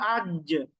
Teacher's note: আচ্ছা, আপনি যদি সুকুন দিয়ে উচ্চারণ করেন হামজা জিম জবর আজ, দেখেন জিহ্বার মাঝখান কিন্তু উপরের তালুর সাথে লেগে যাচ্ছে